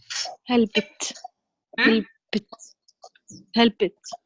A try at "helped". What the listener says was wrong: No, you put sound there. No sound. No sound comes out of our mouth. Help. Help.